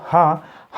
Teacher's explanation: हा का उच्चारण स्थान जो है दोस्तों वह होता है स्वर तंत्र। स्वर तंत्र जो होता है हमारे काकल और कंठ के मध्य क्या होता है, स्वर तंत्र।